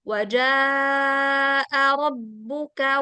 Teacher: jimnya panjang karena setelahnya hamzah. Kalau setelahnya hamzah jadi 4 ketukan.